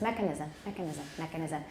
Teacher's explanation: when you do stress mechanisms make sure the stress is on the first syllable